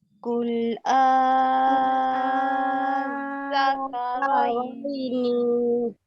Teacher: jangan baca bunyi lam, lam tak ada tanda terus pergi huruf zal